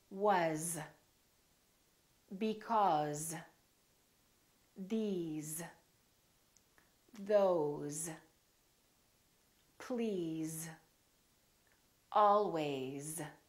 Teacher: So these are some very common words that we use all the time that are spelled with an S and pronounced with the Z sound